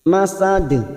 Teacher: huruf dal yang mati di akhir kalimat dan dibaca waqaf qalqalah kubra